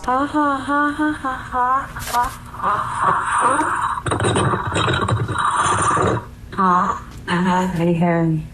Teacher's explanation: Alexa repeats the words back in a small voice that quickly becomes breathy and scary with gasping noises